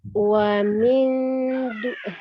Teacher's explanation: Karena kebetulan huruf dal berarti lidah kita sudah membentuk makhraj huruf dal ketika mengucapkan huruf nun sukunnya ya. Ya, kemudian ada nun tasdidnya itu dia gunnahkan ya. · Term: ikhfa